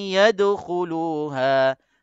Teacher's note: Nun masuk ke dalam ya dalam qadar 2 harakat. Sementara kita nak sebut ya tu ada suara keluar pada hidung kita itu 2 harakat. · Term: dengung